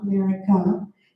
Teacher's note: America starts and ends with the schwa